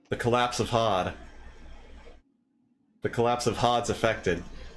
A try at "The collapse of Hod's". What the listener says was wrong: No, it's because you said the collapsa, and then you stopped yourself and then started the sentence again.